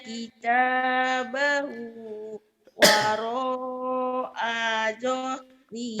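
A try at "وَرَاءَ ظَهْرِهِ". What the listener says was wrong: Tapi pendek A-nya. Nih dengerin ya. Wa amma man utiya kitabahu wara'a zahri. Ayo pendek. A-nya pendek. Pendek. Zahri. Pendek. Wara'a zahri. Pendek. Wara'a zahri.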